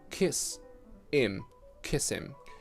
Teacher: I ignore the h sound completely, just omit it.